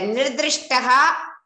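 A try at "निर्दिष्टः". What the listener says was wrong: not dhru nirdhi dishtaha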